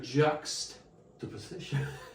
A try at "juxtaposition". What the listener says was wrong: You put the emphasis on the wrong syllable.